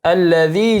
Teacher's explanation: Alladzi mad tabi'i dibaca dua harakat · idgham bi gunnah, tanwin bertemu waw maka didengungkan selama 3 sampai 4 harakat.